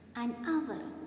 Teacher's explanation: Here the word hour starts with H letter. But H is silent here. So there comes a vowel sound. An hour. It is the exception case only.